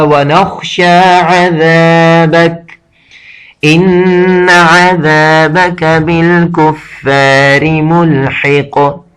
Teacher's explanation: ان نون پر شد لگا ہوا ہے، اس وجہ سے اس کو غنہ کیا جاتا ہے